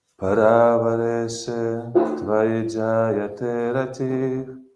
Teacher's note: On jayate, longer a, second a, yes? And so we cannot prolong anything else.